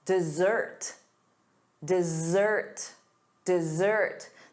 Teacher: The syllable stress is on the second syllable, da da, dessert.